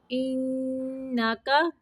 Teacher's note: نون مشدد کا غنہ ہے